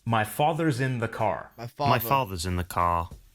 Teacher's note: are always clearly pronounced British English is non Ric meaning that the r sound is not pronounced unless it's followed by a vowel sound